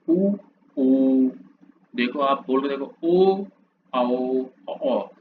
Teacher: आपके जो होठ हैं वो वृत्तमुखी बन जाएंगे। गोलाकार बन जाएंगे।